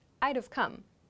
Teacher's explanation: I reduce would to d, and I make the v sound for have. So I would have come becomes I'd have come, but I had to work.